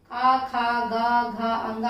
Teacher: हमारे कंठ से हवा निकलती है जब हम कवर्ग का उच्चारण करते हैं